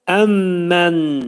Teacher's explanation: mim hərfi burunda sıxılacaq 2 saniyə müddətində.